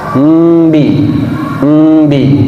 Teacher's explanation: ketika mengucapkan huruf ba, contoh semisal Bismillahirrahmanirrahim, tanpa kita sadari biasa diawali dengan huruf mim. Ada berbunyi huruf mim.